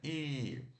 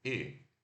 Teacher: I longo a gente sorri e segura, né? I. Agora, o I curto a gente relaxa os lábios e é curto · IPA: /i/, /ɪ/